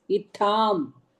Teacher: The tha is the mahaprana, not alpa prana.